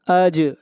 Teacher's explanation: جیم کے اوپر قلقلہ کریں گے